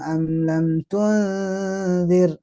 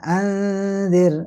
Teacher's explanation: guna itu di samping masuk hidung juga harus ditahan ukurannya dua kali tasdid